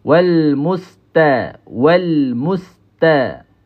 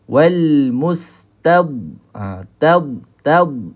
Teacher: huruf ta ini biasa nipis, huruf dad tebal